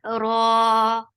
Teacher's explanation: Ra is 2 counts long and it is heavy.